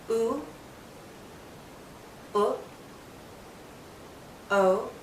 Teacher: the back vals our tongue pulls back back valves pulled back the tongue is pulled back so that the highest point is the back of our tongue the tip though is still slightly down and slightly touching the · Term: back vowels